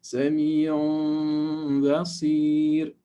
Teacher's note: We need to ghunna for 2 units of length.